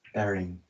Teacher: 여기에 있는 T 사운드랑 D 사운드가 어떠한 환경이 있는데 그 환경 때문에 모두 R 사운드로 난다는 거예요. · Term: neutralization